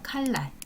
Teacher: 어떤 것들이 있나 칼날 칼 날이잖아요 근데 이것이 발음이 될 때는 칼의 니은이 리을로 바뀌어서 칼날 이렇게 발음이 됩니다